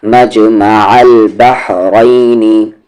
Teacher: اس ہا کا مخرج بیچ والا حلق